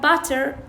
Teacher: الأمريكان عندهم شو يقولون هذه التاء يسووها مثل الد اللي هي شو يسموها فلاب تاء، تمام؟